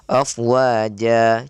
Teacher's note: Penjelasan poin berikutnya adalah ketika kita ingin mewakafkan pada mad yang berharokat ya tanwin fathatain ya, itu di akhir afwaja atau dikenal mad iwad ya. Usahakan untuk membacanya 2 harokat tok saja. Jangan sampai kita menyeretnya menjadi panjang ya.